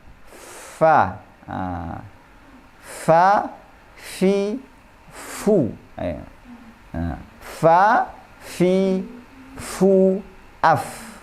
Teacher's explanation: Makhraj huruf fa adalah perut bibir bawah bertemu dengan ujung gigi seri depan yang atas. Ya. Perut bibir bawah itu adalah bibir bagian dalam.